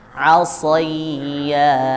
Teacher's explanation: Nah, kalau pelan-pelan ya, shad yang kasroh itu pelan-pelan menyebutnya jadi soi